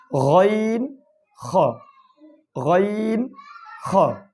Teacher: 3 নম্বর মাখরাজ হলকের শেষ ভাগ হইতে